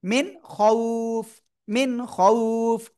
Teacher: ই স্পষ্ট, there is নো গুন্না, only clear sound